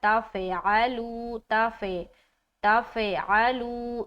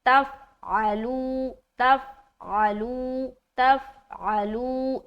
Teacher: आइन बिल्कुल वाज़ेह और ता को फा से मिलाते हुए कलकला नहीं होना चाहिए